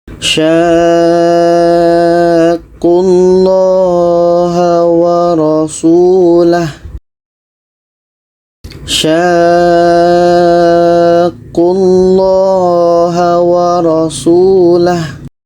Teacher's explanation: Ini mad lazim kilmi mutsaqqal. Jadi kita panjangkan dulu 6 harakat, baru disambut dengan huruf yang bertasydid.